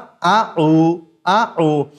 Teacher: हमजा का मखर भी जहां से हा निकलता है यानी कि सीने की तरफ वाला हलक का शुरू वाला हिस्सा वहीं से हमजा भी अदा होता है